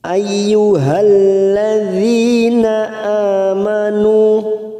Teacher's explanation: Ladzi ada kasrah diikuti ya sukun, mat tabi'i 2 harokat kita panjangkan.